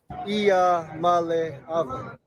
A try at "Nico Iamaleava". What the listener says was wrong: I think you might have an extra vowel, though.